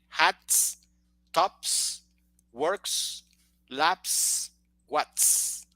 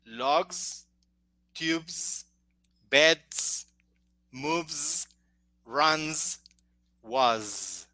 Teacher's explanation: So in the second group, the S is pronounced with vibration. Yeah, in the first group, no vibration.